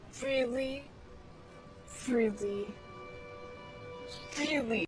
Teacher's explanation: you can even hear vibrations when she pronounces the R